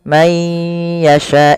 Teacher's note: Kemudian ala man yasha'u min ibadih, ala ada mad tabi'i fathah bertemu alif, may yasha, ini sama sebagaimana ketika nun bertemu ya, dia di sini man yasha, dia ayya ya, ketiga-tiganya dibaca dengan sama, yaitu memasukkan nunnya kepada huruf ya, dan hukumnya yaitu idgham bi gunnah